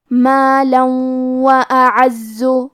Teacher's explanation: کلمت اعزو میں الف پہ اور عین پہ دونوں پہ زبر ہے تو ہمیں یہ دونوں زبر کو برابر سے ادا کرنا ہے، زے کے تشدید کو ظاہر کریں گے · کلمت مالن کے آخری میں لام پہ تنوین زبر ہے، پھر حرف الواو ہے، یہاں حکم ہے ادغام تو ہم یہ حکم کو غنہ اور تشدید کے ساتھ ادا کریں گے